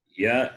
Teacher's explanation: is pronounced from the palette therefore it is palatal